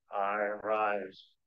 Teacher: it's the poetic foot in which you have two stressed syllables